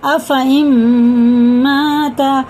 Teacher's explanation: نون ساکن کے بعد میم پہ شد ہے تو یہ ادغام ہوگا